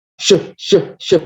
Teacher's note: Kalau shin itu ada sifat tafasyi, menyembur tafasyi itu.